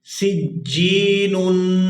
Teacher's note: سین جیم زیر سج، جیم یا زیر جی، سجی نون 2 پیش نون، سجینن۔ یہاں تنوین پر اخفا ہوگا، یہاں بھی آواز ناک کے اندر جائے گی اور اس کو 2 سے 3 سیکنڈ کھینچیں گے۔